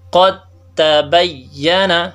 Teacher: ابھی دال اور تا دونوں کا مخرج ایک ہے لیکن صفات کے اعتبار سے دال کچھ اور ہے اور تا کچھ اور ہے. تو جب ادغام ہو گیا تو دال تا سے بدل گیا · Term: ادغام متجانسین